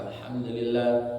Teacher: Banyak yang baca alhamdulillah di dengungnya itu salah. Jadi harus jelas alhamdulillah tak boleh dengung itu idhar syafawi.